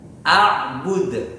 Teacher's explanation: Ini termasuk qalqalah kubra. Oleh karena itu membacanya agak dipentalkan.